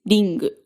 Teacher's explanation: This is an N produced with the back of your tongue instead of with the front.